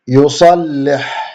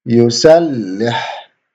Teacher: the back of the tongue here goes up for the sad to make it high, and for the Seen it goes down to make it low.